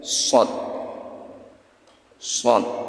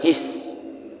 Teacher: Ujung lidah ada di thanaya sufla, ada di bawah gigi seri. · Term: huruf shafir